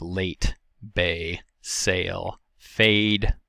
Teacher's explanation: forward tongue position the next lower front vowel is the a it is the higher of the mid front vowels it is tense and unrounded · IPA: /e/